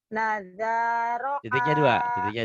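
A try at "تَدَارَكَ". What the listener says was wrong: titiknya dua. Tada. Tadaraka.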